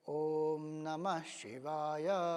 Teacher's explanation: तो जैसे ओम नमः शिवाय जगह अगर हम कहें ओम नमः शिवाय, ये उसका प्रोनाउंसिएशन है। तो न स्वरित होगा, म ऊपर जाएगा, शी नीचे आएगा, व स्वरित होगा और य ऊपर जाएगा।